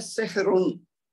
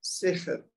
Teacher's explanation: सेहरुन अगर मैं पढ़ूं तो फिर तो रा मोटा पढ़ा जाएगा क्योंकि रा के ऊपर दो पेश हैं, लेकिन अगर मैं रा को साकिन कर दूं यहाँ वक्फ करके तो फिर मैं क्या पढ़ूंगा, सेहर।